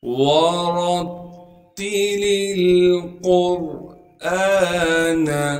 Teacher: را کو آگے تا سے ملا دیں گے کیونکہ تا پر تشدید ہے، تشدید ہونے کی وجہ سے تھوڑا سا ٹھہراؤ رکھیں گے۔ اس لام کو دوسرے لام سے ملا دیں گے، لام لام زیر لل، قاف کو موٹا کر کے پڑھیں گے کیونکہ قاف موٹے حروف میں سے ہے اور قاف کو آگے را ساکن سے ملا دیں گے اور را کو بھی موٹا کر کے پڑھیں گے کیونکہ را سے پہلے قاف پر پیش ہے۔